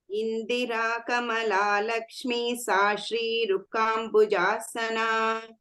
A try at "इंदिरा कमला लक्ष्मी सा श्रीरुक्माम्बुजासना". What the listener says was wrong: रुक्मा and Lakshmi sa दीर्घ. Not ruka, rukma.